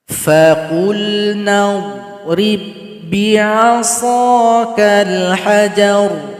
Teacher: Perhatikan di sini huruf dhad jangan dipantulkan karena tidak masuk huruf qalqalah. Ba sukun yang berjumpa dengan ba yang bertasydid tidak boleh juga dipantulkan. Karena di sini ba yang sukun telah masuk kepada huruf ba tasydid.